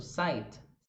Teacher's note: Sight, marcando a última sílaba. Em inglês a gente não marca tanto. Sight. É um t, bem levinho.